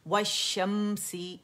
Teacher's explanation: ये लाम शमसिया है क्योंकि ये मर्ज हो गई अपने बाद वाले लेटर में, जिसकी वजह से वो मुशद्दद हो रहा है